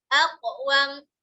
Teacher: Huruf qaf, nah, aqwam. Jangan dikeluarkan angin.